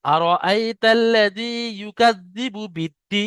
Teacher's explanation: মাদ্দা আরজি ওয়াকফি হওয়ার কারণে 3 থেকে 4 আলিফ পরিমাণ টান দিয়ে পড়তে হবে। যেমন আর আইতাল্লাযী ইউকাযযিবু বিদ্দীন, দেখেন দিনটা 4 আলিফ পরিমাণ টান হচ্ছে।